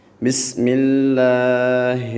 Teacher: جو سا لفظ اللہ ہے اس کو ہم نے باریک پڑھنا ہے